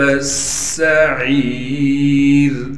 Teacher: عین کے بعد یا مدہ ہونے کی وجہ سے عین کو بھی ایک الف کی مقدار کھینچیں گے اور را کو باریک کر کے پڑھیں گے۔